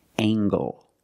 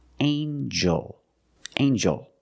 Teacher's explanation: we have angle spelled l e making the nasal sound and the hard G